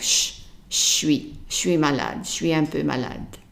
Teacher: So for je suis, if you are in Paris talking to someone from Paris, they would pronounce it suis. So they put the je and the s together and becomes like suis malade, suis un peu malade.